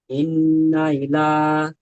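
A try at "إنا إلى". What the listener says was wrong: ইন্নাটা একটু গুণা করুন, ইন্না ইলা, টান হয়ে যাচ্ছে, গুণা হচ্ছে না, ইন্না ইলা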